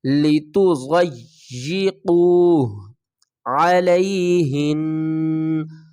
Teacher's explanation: دواد کو یا سے، دواد یا زبر دو، یا زیر جی، یا کے اوپر سختی کریں گے اور دواد کو موٹا پڑھیں گے